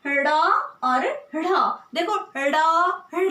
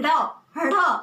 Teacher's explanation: आपकी जो जीवा है वो ऊपर की तरफ उछल रही है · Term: उत्क्षिप्त